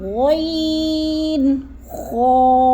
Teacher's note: حلق کے پہلے حصے سے ادا ہوتے ہیں، یعنی شروع والے حصے سے۔ حلق کا وہ حصہ یعنی جو منہ کی طرف ہے، جیسے غین، خا، جیسے غرارہ کرتے ہیں تو آواز نکلتی ہے، ویسے ہی ہم نے آواز نکالنی ہے، جیسے غین اور خا۔